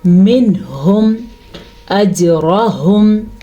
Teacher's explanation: نون ساکن کے بعد حروف ہلکی میں سے ہا آیا ہوا ہے تو نون ساکن کو ہم ظاہر کر کے پڑھیں گے، یعنی کہ منہم اجرہم. جیم کے اوپر کلکلا ہو رہا ہے، را کو پر پڑھیں گے کیونکہ را کے اوپر زبر ہے. · منہم اجرہم، یہاں پہ اظہار کا قاعدہ ہو رہا ہے. نون ساکن کے بعد حروف ہلکی میں سے ہا آیا ہوا ہے تو نون ساکن کو ہم ظاہر کر کے پڑھیں گے، یعنی کہ منہم اجرہم.